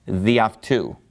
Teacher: So the reason that it has that apostrophe and why it has lost an alpha is that it gets run together with the following word. So it's just pronounced διαυτού, meaning by him.